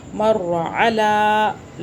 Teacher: لام کو کھینچ رہے ہیں کیونکہ کھڑا زبر آ رہا ہے